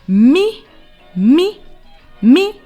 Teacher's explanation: that's me me me me because your voice goes up